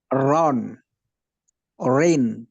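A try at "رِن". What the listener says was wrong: Nah, tipiskan. Rin. Bisa itu ya dirasakan antara bedanya tebal dan tipis.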